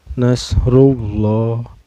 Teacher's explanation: lam jalalahnya ini dihukumi tafkhim atau tebal ya, karena sebelum lam jalalah ini berbaris domah ya. Cara bacanya ditebalkan.